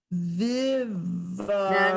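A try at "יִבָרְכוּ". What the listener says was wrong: No. It's a yud. Okay, so in this one, it's Yivarechucha. You hear the r.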